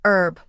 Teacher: Americans often say herb without the h sound while British speakers pronounce the hb.